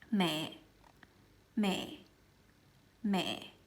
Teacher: But because it has the dot underneath it, you have to make it kind of heavier and lower in pitch.